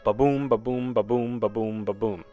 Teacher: I Amic feet an I am is a metrical un unit made up of one unstressed syllable followed by one stress syllable